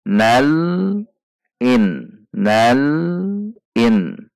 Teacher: Cara melakukannya adalah dengan menahan posisi pada titik artikulasi lam hingga membaca huruf berikutnya